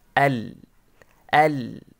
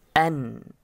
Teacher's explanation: নুনের মাখরাজ লামের মাখরাজের একটু নিচে বা একটু সামনে বা একটু পরে